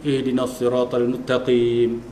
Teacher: Jadi makna seolah macam sin tu terus dia masuk ke dalam ta.